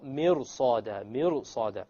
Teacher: the ra, when you make it heavy, it makes it easier to pronounce the sad.